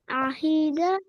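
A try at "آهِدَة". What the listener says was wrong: نہیں، ہی لمبا ہو رہا ہے نا. ہا زیر ہی ہے یا پھر ہی کیا ہے؟ لمبا نہیں کرنا ہے. آہیدہ. آہی. अहीदा।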